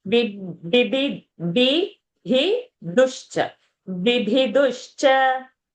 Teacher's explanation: B first is alpa prana, then bhi is a mahaprana.